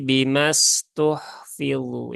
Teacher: ini ada Alif setelah fathah ya kemudian ada Hamzah wasal ya Nah di sini mimnya ketika membaca tidak dipanjangkan ya tetapi mimnya dipendekkan menjadi Bim ya bukan bimastu tetapi bimastuhfu ya mimnya dipendekkan ya